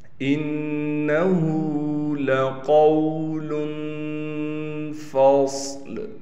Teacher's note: نون پر تشدید کی جائے، تشدید ہونے کی وجہ سے غنہ کیا جائے گا۔ ہا پر الٹا پیش ہونے کی وجہ سے ہا کو ایک الف کی مقدار کھینچیں گے۔